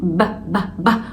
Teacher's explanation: وده بضم الشفايف على بعض، حرف قوي، الصوت بتاعه قوي جدا.